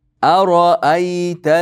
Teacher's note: Qarang, aro a ingichka, ro yo'g'on, a yana ingichka. Ara'ayta ingichka bo'lar.